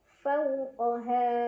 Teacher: Fama faw, ada huruf lin karena ada waw sukun sebelumnya fathah, dibacanya dilunakan. Fawqaha, ha mad tabi'i. Karena ada alif sebelumnya fathah dibaca panjang 2 harokat. Nah, yang ha ini hukumnya tetap mad tabi'i baik dalam keadaan berhenti atau waqaf maupun dalam keadaan wasal ya.